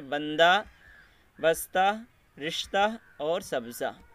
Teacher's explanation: بعض ہائے مختفی کی آواز الف کی طرح معلوم ہوتی ہے، یعنی آواز نہیں آتی لیکن وہ الف کی ہو جاتی ہے، جیسے بندہ، بستہ، رشتہ اور سبزہ، تو اس میں جو ہے وہ الف کا ساؤنڈ بن گیا ہے، الف کی آواز بن گئی ہے۔